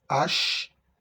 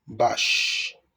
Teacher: Sh is a voiceless sound, and it is at the beginning of sheep, at the beginning of chalet, at the end of ash, and at the end of bash.